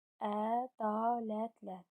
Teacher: Vurğu üçüncü hecadadır. Dörd hecalıdır.